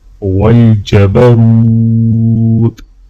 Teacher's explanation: را کو واو کے ساتھ ملاتے ہوئے ایک الف کے برابر کھینچ کے پڑھا جائے گا